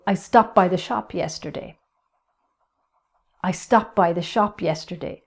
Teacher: I don't even pronounce the D